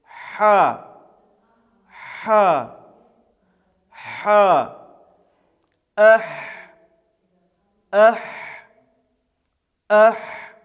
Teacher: Это щелевой и глухой звук, то есть произносится без участия голоса. И произносится он таким образом, как будто мы хотим, чтобы стекло запотело, и дуем на него. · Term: верхнефарингальная согласная